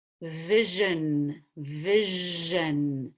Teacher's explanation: I round my lips in the middle of the word vision that's using the vocal cords